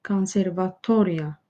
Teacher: Burda konservatoriya bu hecadır. Yəni dördüncü hecadır ki, digər hecalara nisbətən daha qüvvətli deyilir. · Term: vurğu